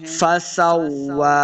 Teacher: فسوا، سین کو واو کے ساتھ ملانا ہے، واو مشدد ہے اور اس کے اوپر کھڑی زبر ہے، اس کو دو حرکات لمحہ کریں گے. واو کو جب پڑھیں گے دونوں ہونٹ گول کرنے ہیں، تب واو کا مخرج صحیح ادا ہوگا.